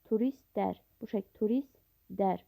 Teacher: Turistlər sözünə t samit tələffüz zamanı düşür. Yəni ikinci t samit düşür.